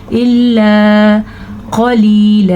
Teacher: یہ موٹا قاف ہے اور یہاں پہ یا مدہ بھی ہے